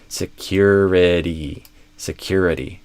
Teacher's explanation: Security stress on the cure. And notice also there's a kind of a hidden Y here.